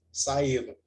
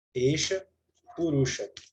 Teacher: A exceção é que a visarga cai